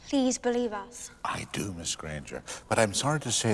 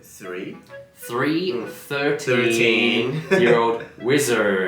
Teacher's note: when it comes to emotional moments you'll see that he does use those rolled RS